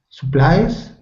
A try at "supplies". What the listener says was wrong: The only thing was that short U in supplies. Supplies. It's more of like a sa instead of a su. So it sounds like you're saying supplies. We want to say supplies. Supplies.